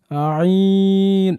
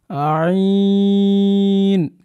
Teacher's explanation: আইন গলার মধ্যখান হতে গলা থেকে চেষ্টা করব আমরা